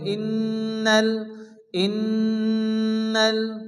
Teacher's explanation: পড়তে হবে ইন্নাল এখানে নুনের উপর কি আসছে তাসদির এজন্য এখানে নুন গুন্না ওয়াজিব এক আলিফ পরিমাণ গুন্না করে পড়তে হবে